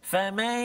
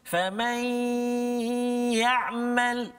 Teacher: nun mati masuk dalam ya, dengung 2 harakat